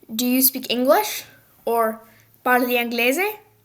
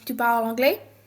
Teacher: the rising of the voice tone at the end of the sentence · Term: intonation